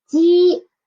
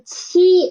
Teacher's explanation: Try to put your hand or tissue in front of your mouth, and ji is soft air and qi is stronger air